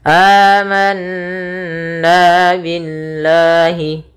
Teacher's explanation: Setiap lafal Allah bila didahului dengan huruf berharakat kasrah, maka dinamakan dengan lam tarqiq, yaitu lam yang lam tipis, tidak dibaca dengan lam tebal. Sehingga di sini bukan lagi billah tapi billahi.